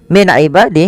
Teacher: Min ibadih ada nun sukun bertemu dengan ain, yaitu dibaca dengan jelas suara nunnya karena dia ada bacaan izhar halqi